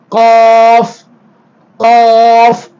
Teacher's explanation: போல அடுத்து நாவின் எழுத்துக்கள் மொத்தம் 18 அதுல நாவின் கடைசியிலிருந்து காஃப் வெளியாகும் நாவின் கடைசி பகுதி மேல் முரசியில் ஒட்டுகிற பொழுது காஃப் காஃப் வெளியாகும்